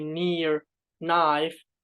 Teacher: N, voiced alveolar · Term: nasal